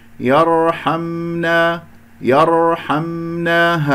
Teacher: الراء ساكنة قبلها مفتوح مفخمة، وزمن زمن جريان الصوت في الراء والميم واحد لأنه من أحرف التوسط، يرحمنا يرحمنا هكذا. · والميم ساكنة، يجري فيها الصوت فترة زمنية بسيطة